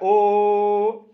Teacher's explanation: ओंठ भी काम कर रहा है और गला भी काम कर रहा है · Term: कंठोष्ठ